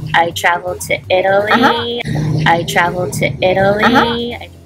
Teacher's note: you can hear the D sound where you would read a T